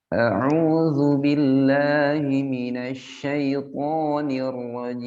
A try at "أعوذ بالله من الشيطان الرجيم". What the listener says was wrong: Syaitan. Tanya tebalkan lagi Ustaz. Syaitan.